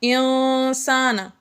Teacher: ان میں نون مشدد ہے، اس لیے یہاں پر ہم نے غنہ کیا انسان۔ انسانہ میں نون ساکن کے بعد سین آ گیا حروف اخفا میں سے، اس لیے یہاں پر ہم نے اخفا یعنی غنہ کر کے پڑھا۔